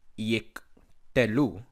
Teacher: Therefore, when two schwas occur together, as in yiktelu, again, yiktelu, the first must be silent schwa ending the syllable yik, and the second the vocalic schwa beginning the new syllable telu, or perhaps even constituting by itself the second syllable te.